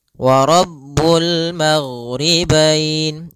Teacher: alif lam yang tertulis dan dibaca dengan jelas suara lamnya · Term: alif lam qamariyah